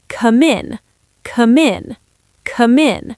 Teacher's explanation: Take the M and glue it to the I.